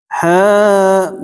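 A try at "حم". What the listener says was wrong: Coba nggak diputus. Hamim.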